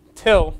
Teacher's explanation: for the word till we would get a long puff of air